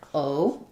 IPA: oʊ